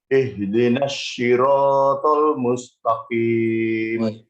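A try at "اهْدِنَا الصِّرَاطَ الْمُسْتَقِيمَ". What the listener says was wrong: Nah, perkataan short harus diperbaiki, yakni ihdinas. Dia pakai S biasa yang ditebalkan.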